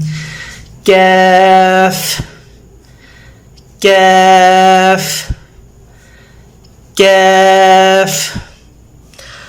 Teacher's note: زبان کی جڑ سخت تالو کے ساتھ، نرم تالو سے آگے سخت تالو، ریجڈ تالو سٹارٹ ہوتا ہے، زبان کی جڑ وہاں پہ ٹچ کریں، کیف ادا ہوگا۔